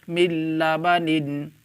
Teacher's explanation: यहाँ पर देखें नून साकिन के बाद हुर्फ़ यरमलून में से लाम आ रहा है, इसलिए नून साकिन को लाम से मिलाकर बग़ैर गुन्ना के पढ़ेंगे। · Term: इदगाम बिला गुन्ना